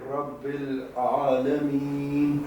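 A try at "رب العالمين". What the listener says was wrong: بہتر.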